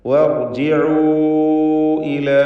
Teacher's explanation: വർജിഉ, ഇവിടെ റാഇന് തഫ്ഖീമാണ്. വർജിഉ ഇല, വാവിന് മദ് മുൻഫസിൽ ജായിസ് നൽകി 4-5 ഹറക്കത്തിൻ്റെ അളവിൽ ദീർഘിപ്പിക്കുക.